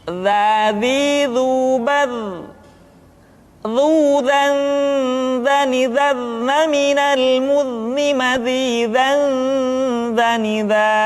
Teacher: Diucapkan dengan menyentuhkan ujung lidah dengan dinding dua gigi seri bagian atas seperti kita mengucapkan huruf tha. Ujung lidah boleh ditampakkan ataupun tidak nampak. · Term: huruf dha